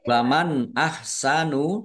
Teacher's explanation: Nun sukun bertemu dengan huruf alif. Bacaan izhar dibaca jelas